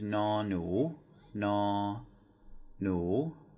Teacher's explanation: So that second word is a rising tone